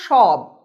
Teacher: যদি রোমান হরফে দেখি তাহলে সেটা দাঁড়ায় SH, অর্থাৎ লিখছি দন্ত স কিন্তু উচ্চারণ হচ্ছে তালব্য স